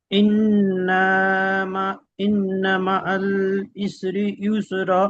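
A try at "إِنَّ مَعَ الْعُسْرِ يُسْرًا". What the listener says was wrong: না, প্রথমটা আইন আছে, আইন পেশ উ, ইন্না মাআল উসরি ইউসর।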